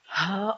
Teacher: اللہ کا لفظ حمزہ سے شروع ہوتا ہے اور ہا پہ اینڈ ہوتا ہے، جو مخارج میں سے سب سے آخری مخرج ہے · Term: اقصی حلق